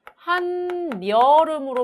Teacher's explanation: 한여름으로 발음이 되거든요. 자, 얘는 지금 파생어에서 뒤에 이어지는 말이 여로 시작했기 때문에 니은이 끼어 들어간 거죠